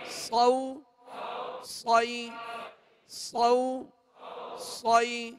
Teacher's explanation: صاد کو سیٹی کی آواز میں اور پر پڑھیں گے موٹا پڑھیں گے حروف مستعلیہ میں سے ہیں